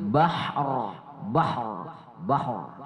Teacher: berwakaf pada ro juga ro sukun jadi Harus kedengaran juga rnya ra dalam kondisi seperti itu dibaca tebal tafkhim